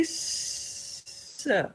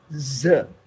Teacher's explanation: when you say s, there is no vibration, but you're saying it exactly the same way as when you say z, s, z. Everything is identical.